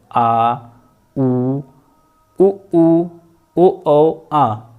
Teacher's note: पश्च स्वर का मतलब ये होता है जीभ के पीछे वाले भाग से काम करता है